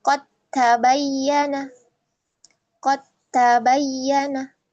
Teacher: dal bertemu ta maka qod dalnya sukun kemudian bertemu dengan huruf ta. Maka huruf ta di sana ditasydidkan ya.